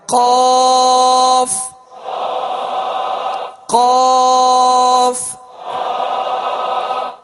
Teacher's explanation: زبان کی جڑ اور تالو کے نرم حصے سے دو نقطے والا قاف جو پر پڑھا جاتا ہے وہ ادا ہوتا ہے